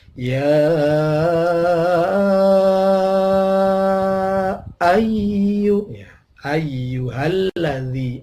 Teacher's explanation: Ya ayyuha, ya ada mad tabi'i, fathah ketemu alif, tetapi setelahnya ada hamzah pada kalimat lain, ayyuha, maka namanya mad jaiz munfasil, panjangnya 5 sampai 6 ketuk